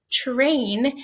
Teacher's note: when i co-articulate those sounds together something funny happens it's a co-articulation that we call affrication · Okay, so when I pronounce it, it's just train, and the first phoneme my mouth produces is really ch